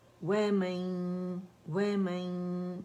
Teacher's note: وَمَن یا ہم نے غنہ کیا 2 کاؤنٹ کا